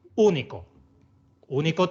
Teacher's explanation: esdrújulas siempre llevan tilde siempre no hay complicaciones por ejemplo único único tiene tres sílabas una dos y tres y el golpe de voz va en la tercera contando desde el final